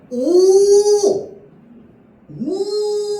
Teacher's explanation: 입술 주변에 힘을 줘서 입술을 동그랗게 만듭니다. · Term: 원순모음